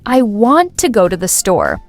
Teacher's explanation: The important words are want, go, and store. Everything else shrinks. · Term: stress timed, stress-timed